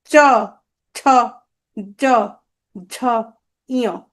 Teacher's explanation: দেখো, তালুতে লাগবে, দেখো, চ, ছ, জ, ঝ, ইয়। এগুলোকে বলে তালব্য ধ্বনি।